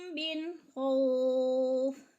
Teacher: من پہ اظہار ہو رہا ہے، نون ساکن کے بعد خو حروف اظہار میں سے ہے، تو ادھر اظہار کریں گے، یعنی اخفا نہیں کریں گے۔